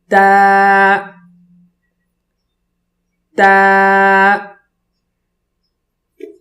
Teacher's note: تا کو پڑھنے کے لیے زبان کو اوپر کے تالو سے لگائیں گے، پھر آواز نکالیں گے اور باریک آواز ہو۔